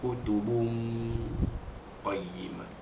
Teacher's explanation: menyembunyikan bunyi tanwin ke dalam huruf qaf dengan dengung